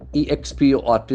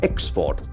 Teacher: So the accent must be in the first syllable.